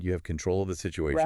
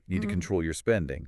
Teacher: But in both cases, the stress is on the second syllable.